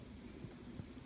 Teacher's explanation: with the b, you can hear a little bit of vibration